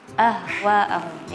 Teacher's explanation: Walaupun hak besar, karena kalau itu keluarnya dari dada ya, sedangkan sebenarnya makhrajnya itu adalah keluar dari bagian paling bawah tenggorokan